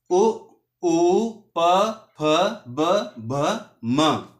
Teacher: तो जब हम इन वर्णों का उच्चारण करते हैं तो हमारे जो होठ होते हैं दोस्तों तो उनका यूज़ होता है। इसीलिए इनका उच्चारण स्थान ओष्ठ माना जाता है।